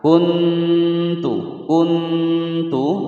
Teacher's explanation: nun sukun bertemu dengan huruf ta disamarkan dan didengungkan ya, hukum bacaan ikhfa aqrab